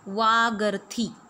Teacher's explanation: You can see that vak ends with halant ka, and the next word is beginning with a, which is a vowel. So as per the rule of jashtva sandhi, ka is replaced with ga.